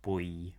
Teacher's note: the lips are rounded. So they're drawn together.